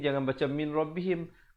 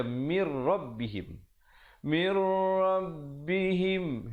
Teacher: Namir di situ dibacakan idgham bila gunnah, masuk tanpa dengung, nun mati bertemu ra.